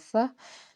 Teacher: میم جو ہے میم ساکن ہے اور یہاں پہ اظہار شفوی ہوگا، یہاں پہ ہم غنہ نہیں کریں گے بلکہ اظہار کریں گے